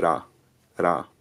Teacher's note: It also has an alveolar tap in place of the r sound in my accent, so it's era, era. It's like a rolled R, but it's only rolled once.